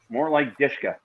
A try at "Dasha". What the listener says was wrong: No, Dasha. No, there's no K.